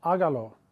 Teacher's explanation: when you say hágalo, notice we're stressing the A at the beginning. There's going to be an accent on that first A.